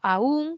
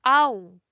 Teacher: unos dicen la primera aún como hiato acentual y la otra la dicen aún como un diptongo. Aunque en nuestra variedad suena igual, ambas como hiato.